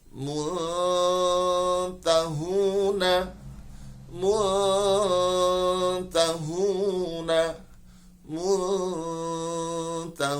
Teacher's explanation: suara samar lebih dominan dibandingkan dengan suara dengung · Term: ikhfa